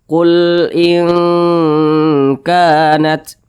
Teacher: Kalau kita lihat di samping, huruf kaf termasuk kepada huruf ikhfa hakiki dan tergolong kepada ikhfa hakiki ab'ad. Nah, jadi cara bacanya itu disamarkan kemudian didengungkan. Akan tetapi suara dengungnya itu lebih dominan, jadi lebih condong berbunyi eng. Qul in kanat, didengungkan itu suaranya kita tahan, kita panjangkan kira-kira 2 harakat atau 2 ketukan.